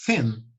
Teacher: this sound represents the TH, but with a lot of air, not vibrated, but with air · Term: som assoprado